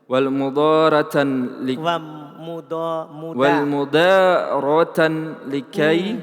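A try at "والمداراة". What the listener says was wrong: panjang pendek Kan ada alif itu yang dihilangkan. Ada alif yang dihilangkan.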